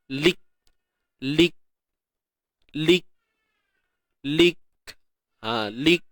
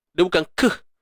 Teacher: Dhalik. Tahan suara dulu, baru lepaskan sifat hams.